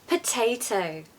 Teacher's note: this word showcases the wonderful alphabet a not the stretched arm a